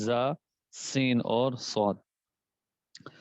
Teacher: یہ 3 حروف ایسے ہیں کہ جن کی ادائیگی کے وقت آواز میں سیٹھی پیدا ہوگی